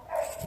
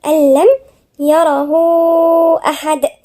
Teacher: النون الساكنة وبعدين اللام من حروف الاستثناء، يبقى هنا في ايه؟ إدغام ومفيش غنة